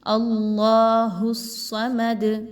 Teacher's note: اس کے بعد جو صاد ہے وہ بھی حروف مستعلیہ میں سے ہے، اس کو بھی پر پڑھا جائے گا، موٹا کر کے پڑھنا ہے صاد کو · اور دال پر اگین وہی قاعدہ فالو کرتے ہوئے کہ اگر آپ نے یہاں پر وقف کرنا ہے تو قلقلہ کا قاعدہ جو ہے اس کو اپلائی کریں گے، دال کو ہلا کے پڑھا جائے گا